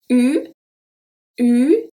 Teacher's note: The air is going through your mouth, not through your nose, and the lips are going to be rounded.